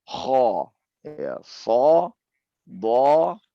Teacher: mengangkat lidah bagian belakang sehingga huruf tampak tebal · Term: isti'la